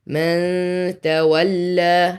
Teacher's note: Ikhfa here, hide the noon. من تولى, so that's 2 count.